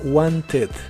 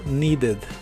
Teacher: cuando le agregas la terminación Ed esta terminación la debes pronunciar normal como Ed con una e muy suave